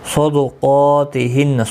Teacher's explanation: صاد اور قاف دونوں حروف مستعلیہ ہے، پر پڑھے جائیں گے۔